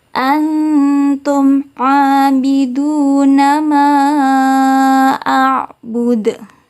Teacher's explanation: Cara membacanya, mimnya harus terbaca jelas. Jadi bukan mendengung. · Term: idhar syafawi